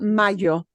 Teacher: more of a Y, but you get that little je sound in there. So, I think that tiny little spritz in with the Y is more common, in my opinion.